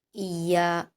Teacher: یا پر تشدید ہے تو سختی کے ساتھ پڑھیں گے، اور یا پر الف مدہ بھی ہے، 2 حرکات کھینچ کر پڑھیں گے